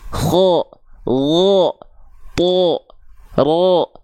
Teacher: ketika fathah dia identik terdengar seperti vokal o